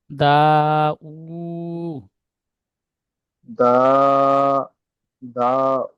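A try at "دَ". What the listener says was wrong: দাল জবার দা টান হবে না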